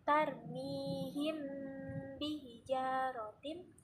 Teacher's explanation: di situ ada hukum bacaan mim mati bertemu dengan huruf huruf ba dibacanya yaitu mendengung